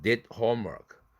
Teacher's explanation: 이 두 번째 드 사운드는 뒤에 자음이 걸리니까 절대 개방해서는 안 된다. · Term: 비개방